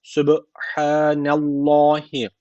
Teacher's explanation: Allah lafzı burada kalın okunacak çünkü öncesine karşı üstten bağlanıyor.